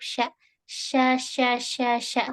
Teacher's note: tapi dia ada suara yang berhembus menabrak di dinding gigi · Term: atafashi